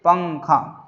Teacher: پچھلے قاعدے میں ہم نے پڑھا تھا، پچھلے کلاس میں ہم نے پڑھا تھا، نون ساکن کے بعد حروف اخفا میں سے، حروف اخفا کے 15 حروفوں میں سے کوئی بھی حرف آئے تو نون کی آواز کو ناک میں چھپا کر پڑھیں گے